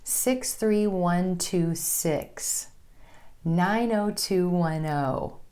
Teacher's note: When you're sharing your zip code, you want your emphasis to fall on the last number.